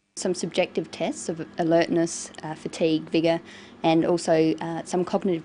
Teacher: she uses rising and falling tones and a tone that's neither Rising nor falling